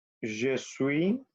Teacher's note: acuérdense que la S final no se pronuncia.